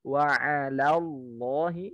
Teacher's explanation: Ngikutin lam yang tebal, Allahnya tebal, tapi lam sebelumnya ya jangan tebal. Wa'alallahi, yang tebal Allahnya, bukan lam yang pertama.